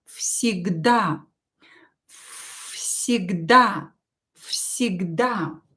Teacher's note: As you can hear, I pronounce V here as F.